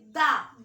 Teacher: जा बोलेंगे तो जा आपका ऊपर टकराता है आप दा बोलेंगे दा दा आपका दांत में टकराता है इसलिए दाब का dantivad है दांत से जो दांत को छूटा · दा आपका दांत में टकराता है, इसलिए दा आपका दंती वर्ण है, दंत से जो दंत को छूता है, दंत।